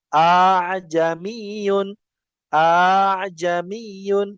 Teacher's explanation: Sedangkan hamzah yang kedua dibaca ringan hingga makhrajnya terdengar antara hamzah dan alif. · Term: tashil